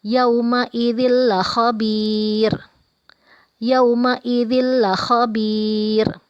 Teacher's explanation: Ada tanwin bertemu huruf lam, dibaca tidak dengung atau pendek.